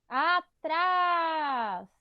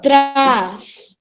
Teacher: O trás é o mais forte, que é a nossa última sílaba. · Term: oxítona